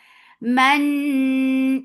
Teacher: idgham with gunna. So keep the sound in your nose for a longer time.